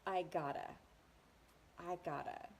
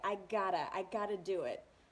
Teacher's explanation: we even further reduce I've gotta to sound like I gotta